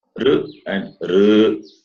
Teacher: R and R, that is from the roof of the mouth, cerebrum, and therefore cerebrals.